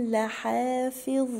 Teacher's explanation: حرف الظاء من الحروف اللثويه اللي بخرج فيها طرف اللسان